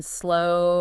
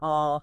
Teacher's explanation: O can be more closed like in slow or more open like in all